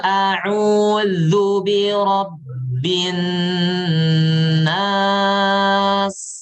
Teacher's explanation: Zu ditarik sedikit sampai litahqiqil makhraj untuk untuk menerapkan makhraj huruf dzal.